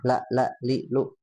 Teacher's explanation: kalau lam itu makharijul hurufnya ada di ujung lidah, ya. Temu dengan langit-langit, ya, la li lu, tapi bukan langit-langit, ya. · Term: huruf lam